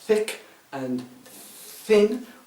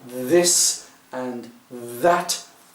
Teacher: And yes, in English we do have soft and hard forms of th, which is, for example, in thick and thin we have just the aspirate, just the breath without the vocal, and then we have this and that, which is using the voice